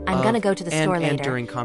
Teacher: they stress words like go and store, but the other words become softer and shorter, which creates that smooth American rhythm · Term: stress important words